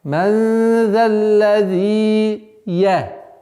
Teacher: полноценно договариваем две огласовки, естественное удлинение «зи», потом переходим на звук «я» следующего слова